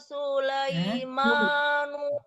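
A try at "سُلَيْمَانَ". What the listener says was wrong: A-nya tidak panjang, Bu. A-nya tidak panjang. A-nya jangan dipanjangkan. Sulaimana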